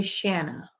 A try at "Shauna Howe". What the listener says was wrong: So you can't say Shanna, but you can say Shauna.